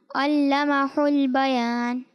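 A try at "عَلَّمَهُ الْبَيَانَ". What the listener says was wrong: اچھا یہ علمہ حل نہیں ہے. ٹھیک ہے. علمہ البیان ہا ہے, یہ ہا نہیں ہے.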